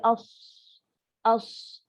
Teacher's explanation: Kalau sod, angin tu satu hala.